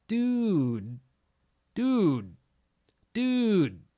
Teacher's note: I'm going like I'm gonna say dude, but I just don't add the d at the end. Instead, it just kind of comes to a stop.